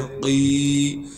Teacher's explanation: مدہ ہونے کی وجہ سے قاف کو ایک الف کے مقدار کھینچیں گے